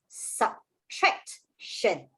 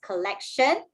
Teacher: Remember, the T does not sound as T anymore. It becomes the sh.